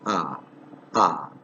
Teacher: it's produced in the central part of the vocal tract with the lips in their open and unrounded position so lips are open fully open ah ah and unrounded it's